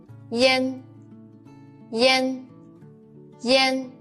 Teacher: make the e sound then quickly slide to the an spread the leaves to both sides the shape of mouth is